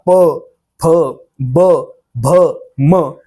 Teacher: प फ ब भ म या पाचही वर्णांचा उच्चार करत असताना आपले ओठ एकमेकाला जोडले जातात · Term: ओष्ठ वर्ण